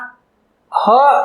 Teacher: હવા કોઈ પણ પ્રકારના ઘર્ષણ વિના બહાર નીકળે છે એટલે આને કહીશું આપણે મર્મર વ્યંજન.